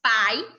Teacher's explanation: na palavra pai, o I tem uma entonação mais fraca do que o A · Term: semivogais